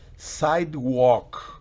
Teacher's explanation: Miren que la L no se pronuncia. Recuerden, el verbo walk, de caminar, la L está presente, pero fonéticamente no existe.